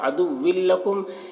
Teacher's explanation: یہاں پر ادغام تام ہو رہا ہے بغیر غنہ کے، ملا کر پڑھیں گے.